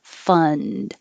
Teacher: You don't have to release the D.